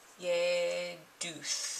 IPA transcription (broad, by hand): jɛduθ